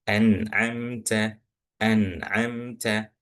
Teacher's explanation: Nun sukun bertemu dengan huruf ain, maka bacaannya harus jelas dan nggak boleh dengung. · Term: izhar